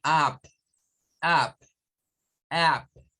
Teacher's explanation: el sonido es más como una especie de A. Realmente, de acuerdo al IPA, es una mezcla entre una A y una U.